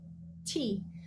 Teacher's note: the difference with the t is that you have less surface area in the same part of the tongue just behind the tip